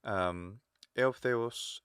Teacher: And then pitch accent, biggest key is an acute accent on a short syllable means that a short vowel, like say eutheos, so the th is high, but then the os is low